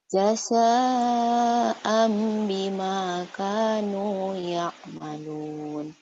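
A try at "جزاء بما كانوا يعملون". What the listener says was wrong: jaza bukan jasa ya jaza zai zaitun Zainab jaza'an bima kanu ya'malun ya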